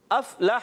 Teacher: हा अदा होता है हलक के दरमियान वाले हिस्से से